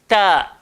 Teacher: Hujung lidah, langgar belakang gigi atas. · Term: huruf ta